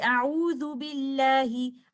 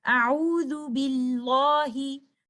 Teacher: So in recitation, there is only one lam, but in writing, there are two lams written. There is complete merging of the first lam into the second lam.